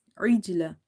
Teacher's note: Qalqala letter are the bouncing letters and there will be reflection in the sound, or you can say qalqala or echoing in the sound when you say such letters. But here jim is sakin but it's in between the word, so there will be a weak qalqala